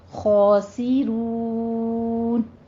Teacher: ہم الخاسرون میں خو کو آپ نے ادنا حلق سے ادا کرنا ہے، پر پڑھنا ہے ، خوس نہیں کہنا، سین باریک رکھنا ہے، سین سے سیٹی · ہے، پر پڑھنا ہے، خوس نہیں کہنا، سین باریک رکھنا ہے، سین سے سیٹی کی آواز کے ساتھ اسے باریک رکھنا ہے